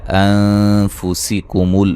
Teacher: یہاں نون ساکن کا باریک اخفا ہے